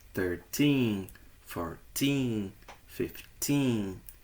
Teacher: nas dezenas menores, ou seja, de 13 a 19, a sílaba tônica está no tin.